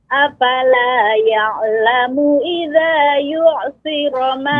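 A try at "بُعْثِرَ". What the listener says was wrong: Bu'. Ba. Ya, huruf ba Ibu, bu bukan yu.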